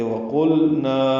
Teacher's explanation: لام ساکن پہ اظہار ہوگا اور نا الف مدہ ہے، دو حرکات لمبا ہے